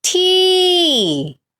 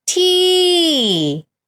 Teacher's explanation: it's falling tone because the sound is go up and then down